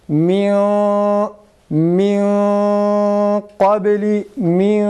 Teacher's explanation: Min kabli örneğinde kaf kalın harf olduğu için biz genizden kalın bir ses çıkararak okuyoruz.